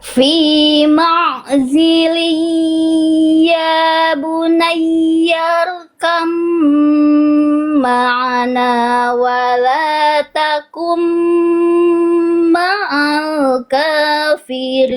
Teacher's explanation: Sama tempat keluar tapi beda karakter. Ba sama huruf mim ini makhraj atau tempat keluarnya sama. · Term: Idgham mutajanisain